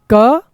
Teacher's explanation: इसमें बहुत ही कम प्राण वायु लगती है इसलिए इनको अल्प प्राण कहते हैं